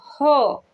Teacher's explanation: कंठ से थोड़ा सा नीचे होता है ह का उच्चारण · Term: काकल्य व्यंजन